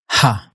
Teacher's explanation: Practically, you're just making an extra breathy sounding vowel. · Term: Dutch H